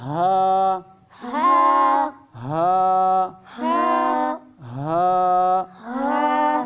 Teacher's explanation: اور ہا جو ہے یہ سینے سے پڑھا جاتا ہے